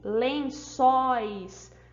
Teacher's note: a gente vai também subiu o tom de voz no final da palavra por causa desse ditongo aberto